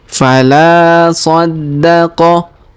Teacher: Huruf la kita panjangkan 2 harokat karena alif di depannya.